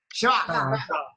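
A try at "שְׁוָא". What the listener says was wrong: You guys got that way wrong. The sound is not held out. It's very sharp and point. Shva. You say the SH. You say the SH. You say the SH very fast. Shva.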